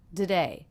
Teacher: we're reducing this unstressed syllable to be the schwa